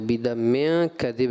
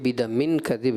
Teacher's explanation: اظہار نہیں ہوگا، اخفا کا غنہ ہوگا